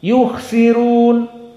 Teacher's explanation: Yukhsirun karena memang jumhur membaca dhammah ra tafkhim. Adapun qiraah Wars dilihat sebelumnya kasrah maka tarqiq.